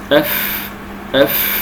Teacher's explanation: والفاء تخرج بباطن الشفه السفلى مع اطراف الثنايا العليا